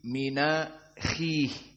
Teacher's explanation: di mana hamzahnya a dihapus dan harokat pada hamzah yakni fathah mengikuti yang sebelumnya nun as-sakinah menjadi mina